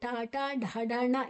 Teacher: ಮೂರ್ಧನ್ಯ ನಾಲಗೆಯನ್ನ ಮಡಚಿ ಹೇಳಬೇಕು